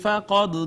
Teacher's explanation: قاف حروف مستعلیہ میں سے پر کر کے پڑھا